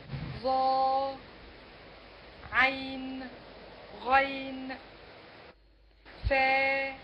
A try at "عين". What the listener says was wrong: لا ما تقلقليش النون استاذ لا تقولي عين قولي عين